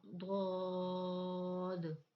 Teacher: زبان کی کروٹ اور اوپر کی داڑوں کی جڑ سے ادا ہوتا ہے. یہ اپنی زبان کو تھوڑا سا موڑیں اور اوپر کے دانتوں کی جو جڑیں ہیں، اوپر کی داڑوں کی ہماری جڑیں ہیں، زبان کی کروٹ وہاں لگائیں تو ہمارا ضاد ادا ہوگا.